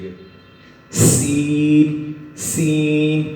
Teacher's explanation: ایک سیٹی کی طرح کی تیز آواز نکلتی ہے